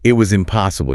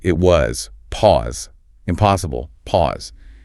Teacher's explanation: for this you use two tiny pauses like bookends around the word. So instead of it was impossible you say it was pause impossible pause. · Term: the emphasis pause